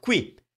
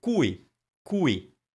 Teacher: Now, qui, it's spelled Q-U-I and it means here, but this one is cui, spelled with a C, and we're stressing the U